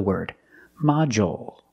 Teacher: we use the dark L because it's after a vowel at the end of the word module